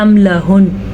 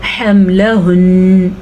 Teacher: جب ایسے نون پہ وقف آ جائے تو تھوڑا خاص قسم کا وقف ہوتا ہے، کیونکہ وہ غننے والا وقف ہوتا ہے. عام طور پہ اگر ہم وقف کرتے تو ہم کہتے ہیں حملہن، ایسے نہیں، یہاں پہ غننے والا وقف ہوگا حملہن، یہ وقف ہے.